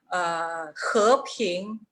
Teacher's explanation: He Ping, ambas sílabas van en el segundo tono, ascendente.